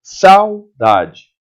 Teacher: o U sai muito fraquinho